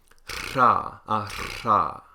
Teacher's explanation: the tongue will vibrate against the alveolar ridge, and you'll get sort of this repeated plosive sound. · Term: unvoiced alveolar trill